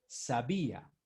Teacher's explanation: sabía tiene la sílaba tónica en la segunda